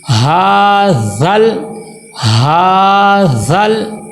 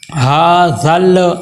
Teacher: ذال کو ہم نے لام کے ساتھ ملانا ہے